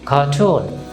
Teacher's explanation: এখানে লক্ষ্য করুন আর এর পরে কি আছে কনসোনেন্ট, সুতরাং আমরা আরটাকে উচ্চারণ করব না, আমরা কিন্তু কার্টুন বলবো না, আমরা কি বলবো কার্টুন।